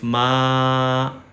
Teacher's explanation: میم کے بعد الف مدہ آ گیا یا الف لانگ واول آ گیا تو اب ہم میم کو لمبا کریں گے. میم کو اسٹریچ کریں گے.